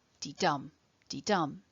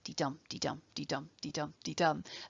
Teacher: pattern with an unstressed syllable followed by a stressed syllable dee dum dee dum is called an iamb and when you